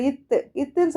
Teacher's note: அந்த நாக்கோட நுனைப்பகுதி எங்க டச் ஆகுது? மேல்வாய் பல்லோட அடிப்பகுதியை வந்து நமக்கு டச் ஆகுது